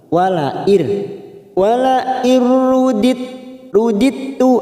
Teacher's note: ada huruf dal sukun yang bertemu dengan tak yang bertasdid. Di sini sifat qalqalanya hilang, namanya bacaan idgham mutajanisain.